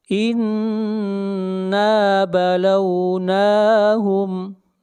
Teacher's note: نون کو کھینچ کر پڑھیں گے، نون کے اوپر کھڑی زبر ہے۔